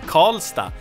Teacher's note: R and L usually in Swedish get merged into a retroflex consonant that sounds like Karl.